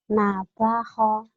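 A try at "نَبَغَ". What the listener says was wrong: Nabaho, nabaho, nabago. Ini go ya, bukan ho. Go. Kalau ho ini yang kayak gini nih. Ini ada titiknya ho. jim, titiknya di atas jadi ho. Ini yang ada segitiga gini go.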